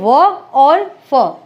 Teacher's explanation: उच्चारण के समय दांत तथा ओठों दोनों के सहयोग से इनका उच्चारण होता है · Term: दंत्योष्ठ